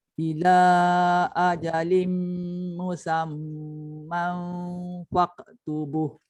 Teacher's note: Ajalim ada dengung, musam ada dengung, man ada dengung.